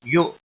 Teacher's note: حمزہ ساکن کو تھوڑا جھٹکے کے ساتھ پڑھنا ہے